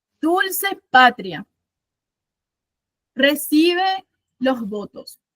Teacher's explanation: Pa es la que suena fuerte, si es la que suena fuerte, bo es la que suena fuerte y tos queda solita. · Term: ritmo anapesto